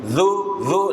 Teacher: huruf dza itu keluar dari ujung lidah